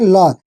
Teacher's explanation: जिसके उच्चारण में हवा जीभ से पीछे के बगल से निकल जाए उसे पार्श्विक व्यंजन कहते हैं।